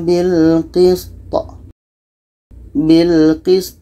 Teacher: Sin mati, to ini pendek, maka kita matikan to ini. Maka to mati itu hukumnya qalqalah, ada pantulan